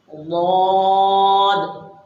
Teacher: اس حرف کا مخرج، زبان کی کروٹ، یہ کروٹ اوپر کی ڈاڑھوں سے ٹچ ہوگی، ضاد۔